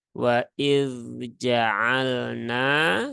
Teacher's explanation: Jadi yang pertama yang harus diperhatikan di sini adalah huruf zalnya harus diperjelas ya, tidak boleh diidghamkan ke dalam huruf jim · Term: huruf dzal yang sukun